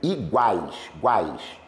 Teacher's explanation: Mas é tritongo. Aqui é oral, porque o nariz não vibra, né? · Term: tritongo oral